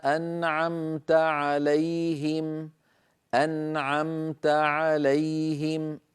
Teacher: انتقلت من النون إلى العين مباشرة